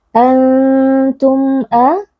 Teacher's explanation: mim sukun yang bertemu dengan Hamzah adalah izhar syafawi dibaca dengan bunyi mim sukun yang jelas tanpa ghunah